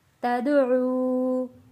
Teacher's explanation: واو ساکن ہے، واو ساکن سے پہلے پیش ہے، حروف مدہ ہے، ایک الف کے برابر کھینچ کر پڑھیں گے